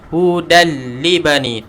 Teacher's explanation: hudan li bani, terus masuk tanpa dengung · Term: idgham bila gunnah